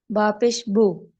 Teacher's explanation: मारूफ पढ़ने के लिए ये पैटर्न होता है कि आपने तरीकाकार ये अपनाना होता है कि आपके होठ पूरे मुकम्मल गोल होने चाहिए पेश के लिए। होठ गोल नहीं हो रहे तो फिर वो मारूफ साउंड नहीं आएगी, वो मजहूल हो जाएगी।